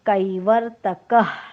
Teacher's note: नियम असा आहे, विसर्गाच्या पुढे क, ख किंवा प, फ आले असता विसर्गाचा आपण अर्धाच उच्चार करतो, परंतु विसर्गाच्या अलीकडील अक्षराचा उच्चार मात्र पूर्ण करतो. म्हणजे इथे क चा उच्चार पूर्ण करून विसर्गाचा उच्चार आपल्याला अर्धाच करायचा आहे